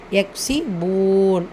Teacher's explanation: கேஃப் சுக்கூன் பெற்று வரும்போது ஹம்சுடைய சட்டம் காற்றை வெளிப்படுத்தி ஓதணும்